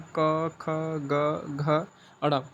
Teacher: जो क वर्ग वाले व्यंजन होते हैं, जो क वर्ग में वाले होते हैं, ये कंठ तक प्लस जीभ का निचले भाग से बोले जाते हैं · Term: कंठीय व्यंजन